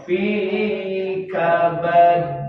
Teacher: kabad ditahan dulu baru mantul, dilepas. Ini qalqalah kubra fi kabad.